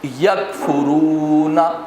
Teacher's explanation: تو قوف کی آواز موٹی بھی ہوگی اور جھٹکے والی بھی ہوگی، جیسے دیکھیے خلق، خلقنا۔ اور کاف کی آواز باریک اور بغیر جھٹکے والی، ظاہر اس میں قلقلہ بھی نہیں ہے اور اس کی آواز باریک ہوگی، پتلی ہوگی، جیسے یکفرون۔